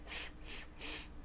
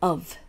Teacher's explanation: う音ですね。それにぶですね。で、ぶという音は▁F▁と▁V▁が摩擦音なんですが、 ▁F▁の場合は、下の、唇に前歯の上の前歯を軽く当てて、噛むわけじゃなくて軽く当ててふふふとしたものが▁F▁で、それに音を出すと▁V▁になりますね。